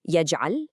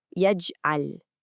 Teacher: We give that G a light echo. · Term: qalqala